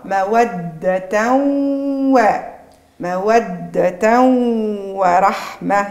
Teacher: مالا لتسكنوا إليها لتسكنوا إليها وجعل بينكم مودة ورحمة وجعل بينكم مودة ورحمة. مودة ورحمة عندي تنوين الفتح بعده حرف الواو وهو من حروف الإدغام مع إبراز الغنة